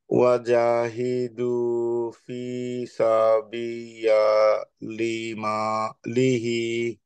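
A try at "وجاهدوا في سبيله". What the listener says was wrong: সাবি ইয়া হবে না, সাবি ইয়ার উপরে তো কিছু নাই, তাই না? সাবি এর জন্য ইয়াটা হচ্ছে মাদ, মাদ আসলি, হ্যাঁ।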